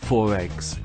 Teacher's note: When we say 4 eggs, we can hear the linking R.